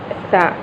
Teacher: زبان کی نوک جب ثنائے اولیہ کے کناروں کو لگے تو سا ادا ہوتا ہے. سا میں ہمس پایا جاتا ہے.